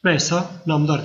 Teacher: özel isimlerde araya kaynaştırma sesi gelmiyor